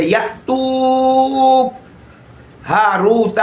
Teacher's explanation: پہلے بوجہ شدت کے آواز مخرج میں روک کر خود آواز ہی بند ہو جائے گی، بعد میں بوجہ ہمس کے تھوڑی سی آواز، تھوڑا سا سانس جاری ہوگا، جس کی وجہ سے سانس کی وجہ سے ایک پست اور خفی آواز ظاہر ہوگی، جو ہوگی بھی آنی۔